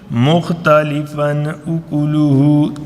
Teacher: اظہار، کہ جلدی سے ہم نے اس کو پڑھ دینا ہے کیونکہ اس کے بعد حمزہ آ گیا ہے